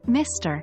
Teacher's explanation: It's a two-syllable word with stress on the first syllable.